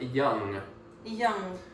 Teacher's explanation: the sound going into the nose and never quite saying g.